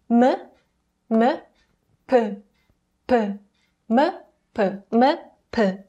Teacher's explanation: there is less pressure between the lips and the length of time the lip stays close together is shorter compared to English M